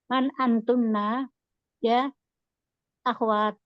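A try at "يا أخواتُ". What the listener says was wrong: Ya akhwat, koknya fathah umi. Akhwat.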